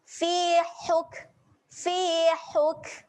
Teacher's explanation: Hati-hati makhraj huruf ha kena tekan di tengah kerongkong. Paksa tekan sikit.